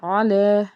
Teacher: مم ما میں بھی الف سے پیچھے زبر تھا، ایک الف کے برابر اس کو کھینچ کے پڑھنا ہے۔ آگے علی، آئین حرف حلقی کا حرف حلق کے درمیان سے ادا کرنا ہے، اور لام کے اوپر کھڑا زبر ہے، ایک الف کے برابر کھینچے۔